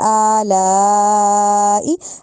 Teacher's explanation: حمزہ پہ کھڑی زبر پڑھنی ہے، لام پہ بڑی مد پڑھنی ہے